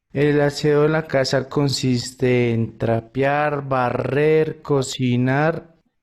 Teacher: consiste ends in the sound e, and en begins with the sound e. Those are going to slide together.